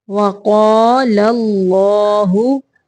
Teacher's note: پہلا لام باریک پڑھیں گے، دوسرا اللہ کا لام موٹا پڑھیں گے